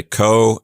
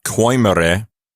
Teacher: it means to not pronounce those two vowels as a diphthong. So you say co, and then you say the E sound separately. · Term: diaeresis